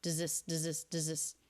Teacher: does this can definitely link without that th sound